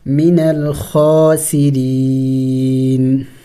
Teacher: را کو باریک پڑھیں گے، را کے نیچے زیر ہے تو را کو باریک پڑھا جائے گا